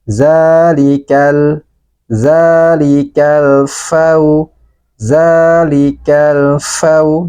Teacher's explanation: Maka huruf lamnya ini harus kita baca dengan jelas. Dan dia sebagian suaranya dialirkan. Zalikal, zalikal fau, zalikal fau, dibaca ringan. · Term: lam ta'rif